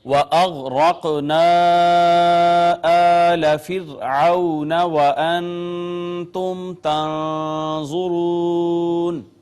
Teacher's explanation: غین حروف مستعلیہ میں سے پر کر کے ہم نے اس کو پڑھا، را کو بھی مفخم پڑھا · را ساکن ما قبل مکسور ہے، اس کا را ساکن ہو اور پیچھے زیر ہو تو را کو باریک کر کے پڑھتے ہیں